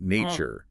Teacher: Nature, the stress is on the first syllable.